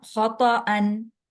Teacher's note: تا کے بعد کچھ نہیں ہے، تو اس وجہ سے تا کو لمبا نہیں ہونے دینا۔